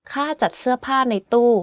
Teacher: Every word on this sentence is in falling tone except จ ั ด which is in low tone and ใ น which is in middle tone.